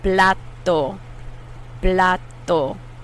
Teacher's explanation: It's different from English T, and English T blows more air out.